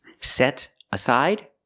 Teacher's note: You hear the T change to a fast D.